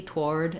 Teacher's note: you'll hear that there's a d there or I'm going to hold that vowel longer